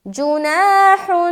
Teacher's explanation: الف خالی ہے، اس سے پہلے زبر ہے تو الف مدہ کریں گے، لہٰذا ایک الف کے مقدار کے باقدر کھینچنا ہے۔ اس کے بعد ہا کے اوپر 2 پیش کی تنوین ہے، یعنی کہ جناح، کیا پڑھیں گے؟